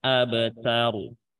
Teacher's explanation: Terus taknya tipis, rohnya tebal.